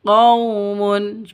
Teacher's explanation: qau sifat lin, lentur, lemes, tidak boleh disentak, tidak boleh dipanjangkan.